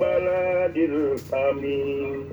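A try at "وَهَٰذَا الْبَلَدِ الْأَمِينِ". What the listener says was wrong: Balad lamnya itu pendeknya.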